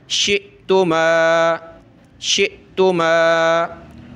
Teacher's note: हमज़ा के ऊपर ये जज़म आ जाए तो हमज़ा साकिना होता है, उस पर झटका दे के पढ़ते हैं